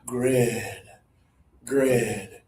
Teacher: My mouth is a little bit open and my tongue is low and there's more air.